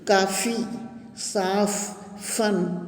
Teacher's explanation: फ बोलते समय ऊपर के दांत नीचे के होंठ को छूते हैं। जब हम फ बोलते हैं तो दोनों होंठ एक दूसरे को छूते हैं। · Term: नुक्ता